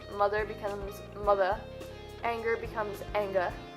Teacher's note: Don't pronounce R's at the end of words. This is common to most British accents.